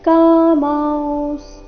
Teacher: ಇಲ್ಲಿ ಅನುಸ್ವಾರದ ಉಚ್ಚಾರಣೆ ನಾಸಿಕ ಉ ರೀತಿ ಮತ್ತೆ ಸ ಪೂರ್ತಿ ಇಲ್ಲ